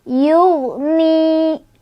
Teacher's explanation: karena ada ya sukun sebelumnya kasrah, bacanya panjang 2 harokat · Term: ma tabi'i